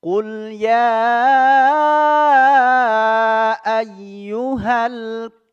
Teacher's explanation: ayyuhal langsung ya tidak boleh jeda enggak boleh sakta harus lanjut langsung ayyuhal ka langsung masuk ke huruf k-nya